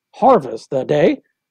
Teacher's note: stressed unstressed unstressed stress